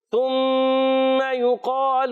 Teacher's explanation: میم مشدد کا قاعدہ ہے، ایک الف کا غنہ ہوگا